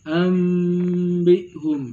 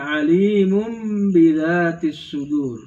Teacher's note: wajib menukar bunyi nun mati tersebut dengan suara mim disertai dengan dengungan dan samar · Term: Iqlab